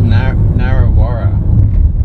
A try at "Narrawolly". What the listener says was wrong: No, something Wally. Narrawolly.